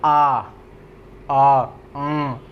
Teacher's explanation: इसके उच्चारण में मुख पूरा खुला रहता है